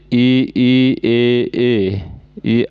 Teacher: अग्र स्वर में क्या होगा जीभ का आगे का भाग ऊपर उठता है